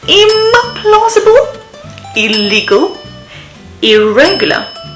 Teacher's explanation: with im before the bilabial consonants b and p, with il before the alveolar sound l, and with ir before the post-alveolar approximant r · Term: in prefix